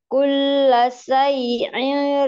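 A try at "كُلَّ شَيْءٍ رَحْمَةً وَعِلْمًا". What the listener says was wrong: Itu Hamzah jangan mendekati ain. Kulla syai'ir.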